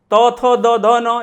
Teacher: यानी तो का उच्चारण किससे होता है, दंत से होता है।